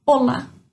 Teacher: Em português, o nosso acento fica lá no A, olá. Em espanhol, apesar de não ter acento, a sílaba mais forte é no O